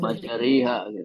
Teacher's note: Tulisannya tetap roh fathah panjang. Fathahnya miring ke kasroh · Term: Bacaan imalah